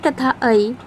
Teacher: तो कंठ तालव्य वर्ण कहते हैं। ए तथा ऐ का उच्चारण हम कंठ और तालु से करते हैं